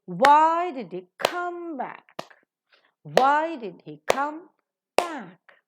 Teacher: He, a pronoun, not accented. Come, yes, it is a verb, accented. And back is an adverb, is accented.